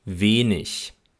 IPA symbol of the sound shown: ç